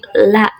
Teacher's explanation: Contohnya seperti la itu lidah ee ada di belakang ee gigi atas dan dekat ee dan menempel dengan gusi atas